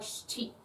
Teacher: So the sh doesn't really have a vowel to it.